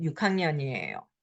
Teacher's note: because the H consonant, it sounds like little like K because it's aspirated